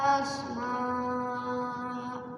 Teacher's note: Kalau di waqaf berarti asma khusus hamzah fathah tanwin. Kalau waqaf panjang 2 harokat namanya mad iwad.